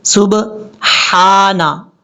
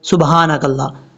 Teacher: اب یہاں پر دیکھیں، پہلا لفظ ہے اس کا، یہاں پر با کے بعد ہا ہے، یہ ہا کلیئر پڑھا جاتا ہے بریک ساؤنڈ کے ساتھ